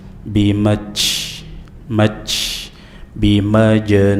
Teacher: Anta binmati ti biasa saja binikmati robbika bi rbika bimaj jim sukun dibaca dengan qalqalah sugra karena terletak di tengah-tengah kata dan dilarang mengucapkan huruf jim dengan aliran nafas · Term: qalqalah sughra